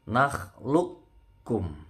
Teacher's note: Kalau disukunkan jadi qalqalah, memantul. Tapi karena ketemu kaf ini melebur, jadi qafnya nggak memantul.